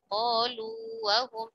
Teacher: peleburannya tidak sempurna karena huruf mad wawunya tetap ada